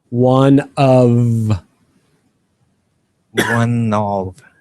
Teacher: try to hit that V sound of one of one yeah get that lower lower lip touching your top teeth and kind of buzz it make it vibrate